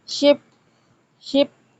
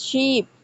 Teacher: Ship ship versus sheep, इसमें long vowel है, इसमें short vowel है. Differ by vowel length and quality.